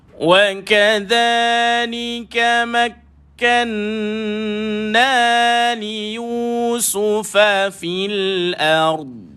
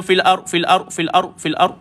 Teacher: pastikan huruf dad ini kedengaran. Barulah jadi bunyi istitalah dia, memanjang dia